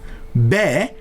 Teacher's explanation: B derken iki dudağımız sıkı sıkıya kapanıyor, ağzımızın içinde bir basınç birikiyor ve o hava dudaklarımızı açmamızla patlamalı bir şekilde ağzımızdan fırlayıveriyor.